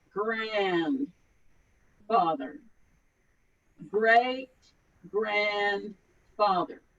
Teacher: it's in the back of our throat we don't roll the r's like you do in spanish it's a growl sound